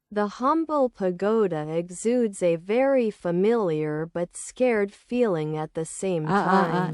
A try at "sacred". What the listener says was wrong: Sacred chứ không phải scared. Quen thuộc nhưng cũng rất là thiêng liêng. Sacred.